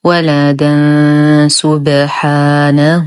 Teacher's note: نقف على الدال المنونة بألف عوض عن تنوين الفتح بمقدار حركتين، ووصلا يتكون لدينا تنوين وبعده حرف السين فالحكم إخفاء حقيقي مع غنة كاملة مرققة